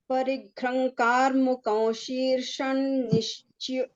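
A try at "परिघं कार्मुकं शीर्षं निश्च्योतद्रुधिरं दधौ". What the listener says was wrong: not ghra, parigha. Ka is there, so anuswaras will be ng. Parigham, karmukam, anuswaras vakara. Shirshan, anuswaras nakara. Nishchota, ta is a dvitva. Nishchota, Drudhiran dadhau. Anuswaras again nakara. Parighankar mukam shirshan.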